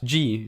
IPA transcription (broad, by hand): dʒi